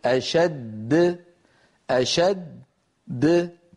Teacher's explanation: ما الذي تقلقل؟ تقلقلت الدال الثانية، أما الأولى فبقيت على حالها